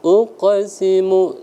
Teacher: Uqsimu, dihaluskan lagi sedikit ya, jangan terlalu kasar qalqalahnya.